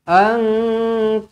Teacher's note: nun kosong bertemu dengan qaf, ikhfa hakiki, dengungkan 2 harakat